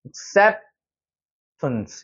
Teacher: 중간에 여기 강조가 되어 있는 부분이 많이 들리죠. 중간에 있는 것만 세게 들리고 나머지는 죽어버리는 거예요. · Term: 리듬감